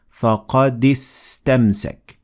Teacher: I'm completely ignoring the Alif in istamsak.